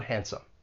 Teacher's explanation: that D, it comes between two consonants. It elides. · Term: elision